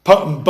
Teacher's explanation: very front, p and b, I make the constriction at the lips